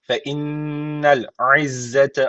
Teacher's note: şeddeli nun var mutlaka bir Elif miktar tutuyoruz